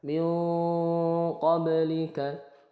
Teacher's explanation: ba sukun ini dibaca memantul qalqalah sughra. Min qablika bukan ba-nya tidak tebal qab tapi qab.